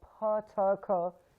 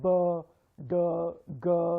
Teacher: And the best way, you can see all the 3 points listed in the PowerPoint, but the best way I would suggest is just try and put your finger on your throat here, on your Adam's apple, and then try saying sounds. Like plosive sounds, which are like pa, ta, ka, you won't feel any vibration out here. But sounds like b, d, g, these are voice sounds. You will feel vibrations in your throat.